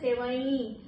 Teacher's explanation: अब ई की बड़ी जो स्वर है वो मुख से न निकल के नाक से निकल रहा है, उसके साथ में ई आ रहा है, सेवई। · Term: अनुनासिक